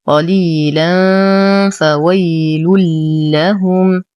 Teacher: لدينا تنوين وبعده حرف الفاء فالحكم إخفاء حقيقي مع غنة كاملة مرققة